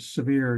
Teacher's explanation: when you say the word severe you almost jump from the s to the V right away uh the E is mostly bypassed in the same way with